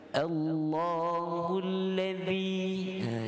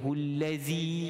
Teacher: Kalimah alladzi ni kita kena ingat dengan huruf zal. Huruf zal ni makhrajnya hujung lidah di bawah gigi hadapan.